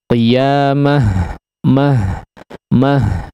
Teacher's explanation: ketika diwaqafkan sebuah kata yang diakhiri dengan ta marbutah ya, maka dia berubah menjadi huruf ha